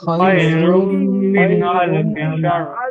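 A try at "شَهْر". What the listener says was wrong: শার বলবেন না, শাহর বা শাহরি বলতে হালকা, রটা রি বলতে পারেন হালকা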